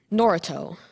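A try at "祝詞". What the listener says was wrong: The first syllable's a little off between them.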